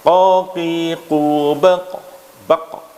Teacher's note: kecenderungan ketika memantul itu nanti bisa yang jumhur, yaitu cenderung kepada fathah